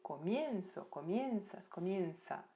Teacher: a sílaba tônica sempre vai ser onde tem o ditongo